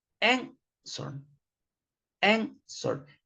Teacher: This verb ends in consonant, vowel, consonant, but you don't double the consonant because the stress is in the first syllable